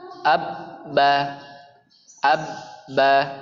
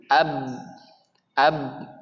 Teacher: suara ba keluar dari kedua bibir kita, bibir atas dan bibir bawah, bertemu kemudian dibuka, keluar huruf ba.